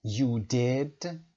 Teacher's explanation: اما اینجا گفتیم you did با حالت تعجب، صدامون رو بردیم بالا، سرپرایز